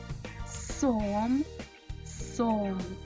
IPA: с